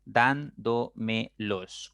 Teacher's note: la mayor fuerza la mayor intensidad va a estar en la cuarta sílaba por lo tanto es una palabra sobre esdrújula y debe llevar